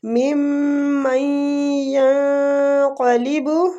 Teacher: ممن ینقلب میم مشدد پہ غنہ، میم کے بعد میم آ رہا ہے تو ادھر ہم نے میم اور میم کے ساتھ مشدد پہ غنہ کرنا ہے۔ من نون ساکنہ کے بعد یا رہا ہے، ادھر ادغام مال غنہ ہوگا۔